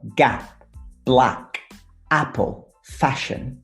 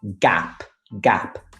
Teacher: this sound a for the english words like gap black apple fashion it's not like e in bello for example it's much wider